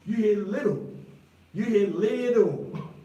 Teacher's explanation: When I say little, you don't hear the T.